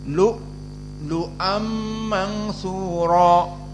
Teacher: Maka di sini lu'lu'am mansura, ra-nya dalam keadaan tafkhim.